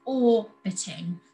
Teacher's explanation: The stress is on the first syllable, orbiting, so we don't double that T.